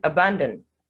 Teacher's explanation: the first a and the o are representing the schwa sound